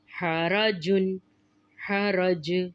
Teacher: جیم بھی حروف قلقلہ میں سے ہے، اس لیے ہم یہاں پر بھی قلقلہ کریں گے اور اس کو پڑھیں گے حرج، کیونکہ قلقلہ میں ہم حرف کو ہلا کر پڑھتے ہیں۔